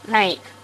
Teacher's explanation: Я не буду грузить слишком сильно теории. Это значит, двойной звук «э» сильное, «и» слабое. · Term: дифтонг